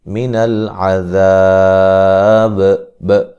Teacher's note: وقف کی صورت میں با پہ قلقلہ کو خوب واضح کریں گے · یہ ب کی جو اینڈ پہ جو آواز آتی ہے یہ قلقلہ کی آواز ہوتی ہے، جنبش پیدا ہوتی ہے ، ہلا کے پڑھا جاتا ہے وہ حرف۔ ذا مد اصلی